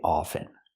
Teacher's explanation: often or is it often well people say it both ways I prefer to pronounce it with the silent t · I don't pronounce the T